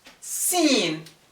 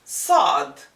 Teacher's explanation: when the letter is emphasized like saw your tongue moves to the back of the pharynx which deepens or rounds out the sound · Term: emphatic consonant